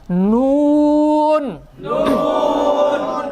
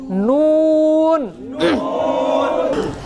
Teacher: আওয়াজটা কেমন যেন নাকে বেজে আসবে।